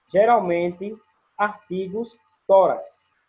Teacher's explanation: O acento tônico recai na penúltima sílaba, como, por exemplo, geralmente, artigos, tórax. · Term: Paroxítonos